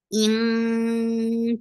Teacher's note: keep the sound in your nose for a longer time because the gunna is akmal. In qa is heavy, the sound is short.